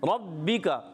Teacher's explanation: را پر زبر ہے، را کو پر ادا کریں گے، با مشدد ہے اس لیے تھوڑا رک کر ادا کریں گے، کاف کو باریک رکھنا ہے۔